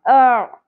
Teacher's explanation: عین وسط حلق سے باریک اواز میں